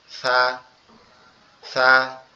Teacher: সাটা হচ্ছে আমাদের জিহ্বার আগা, সামনের দুই দাঁতের আগার সঙ্গে লাগবে